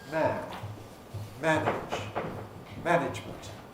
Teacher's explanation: All three words, man, manage, management, take about the same time to say. And obviously that means that you've got to squash up the ij in manage and ijment in management. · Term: rhythmic clipping